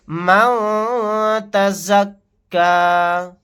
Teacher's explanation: نون ساکن کے بعد تا آ گیا، یہاں پر اخفا کا قاعدہ ہوگا.